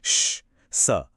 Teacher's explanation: जैसा कि नाम से ही पता चल रहा है, यहाँ हवा को निकलने के लिए थोड़ा संघर्ष करना पड़ता है। सोचिए, जैसे हवा मुंह के अंदर एक बहुत ही तंग गली से गुजर रही हो, जिससे एक घर्षण या हल्की सीटी जैसी स या शुश की आवाज पैदा होती है। · वो जो हिसिंग साउंड है ना, वही संघर्ष है।